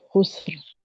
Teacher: را کو موٹا رکھتے ہوئے پڑھیں گے